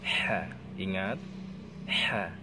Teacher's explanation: Ini huruf tengah tenggorokan